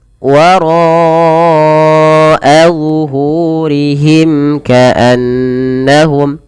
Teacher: pada lafal ro-nya tebal karena dia ro tafkhim, ro yang dibaca dengan tebal karena dia berharokat fathah. Dan ro sendiri punya bacaan mad wajib muttasil, maka ro dipanjangkan 4 harokat.